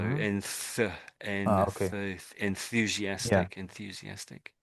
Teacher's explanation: So it's not a very strong TH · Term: TH sound